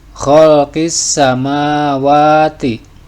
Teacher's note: alif lam menghadapi huruf Syamsiah yaitu Sin cirinya ada tanda tasdid ketika dibaca huruf lamnya tidak tampak tetapi diidghamkan ke huruf Sin kemudian samawati ini adalah mad asli sebab ada fathah berdiri panjangnya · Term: alif lam syamsiah, alif lam syamsiyah